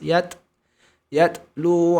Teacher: huruf ta sukun ada percikan nafas